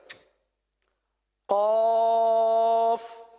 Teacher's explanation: زبان کی جڑ اور تالو کا نرم حصہ یہ قاف کا مخرج ہے